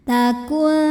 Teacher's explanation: karena ta ini makhrajnya masih dekat dengan nun ya, maka bunyi dengungnya atau aliran suara yang masuk hidung masih sedikit. Aliran suara dari mulut masih banyak. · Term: ikhfa aqrab